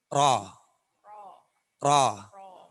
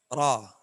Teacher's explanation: Ro itu daya getarnya. Ro itu cuma 2 getaran.